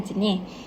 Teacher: Seterusnya ialah konsonan N dalam perkataan jenis. Fonem konsonan N ini mempunyai fitur distinktif plus konsonan, minus silabik, plus nasal, plus anterior dan plus koronal.